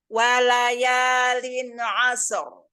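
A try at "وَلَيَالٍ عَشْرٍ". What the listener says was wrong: Itu bukan sin tapi shin. Asyra.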